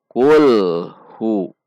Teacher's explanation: Kul, hu, antara al, hu, tidak ada bunyi pantulan. Perhatikan, antara bunyi al, hu, tidak ada pantulan. Kul, hu. Karena dhammah, pastikan posisi bibir kita membulat.